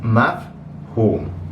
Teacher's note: And then the main characteristic feature of the pattern is that after the second letter of the root, so in this case, in the case of fihim, it would be the ha. There's this like long oo sound that's represented by a waw.